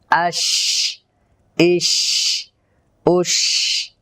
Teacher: তার মাখরাজ জিহ্বার মধ্যখান তার বরাবর উপরে তালুর সঙ্গে লাগাবো দ্বিতীয় নাম্বার সিফাতে হামস অর্থাৎ শ্বাস জারি করতে হবে তৃতীয় নাম্বার তাফাসসি আওয়াজটাকে মুখের ভেতর ছড়ায় দিতে এভাবে করে ছড়াতে হবে। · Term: শিন